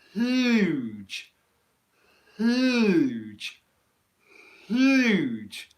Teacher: there's not really any noise coming out my throat until i actually make the h sound